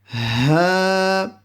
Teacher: This Ha is also a throat letter which is pronounced at the bottom of the throat